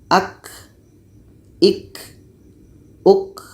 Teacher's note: Jadi kalau kita tidak baca berangin, hamasnya tidak jadi.